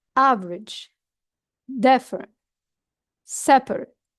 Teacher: we louden our voice at the beginning of the word, and after this we lower down our tone